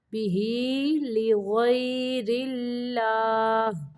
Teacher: اللہ کا لام باریک پڑھیں گے کیونکہ اللہ کے لام کے پچھلے حرف کے نیچے زیر ہے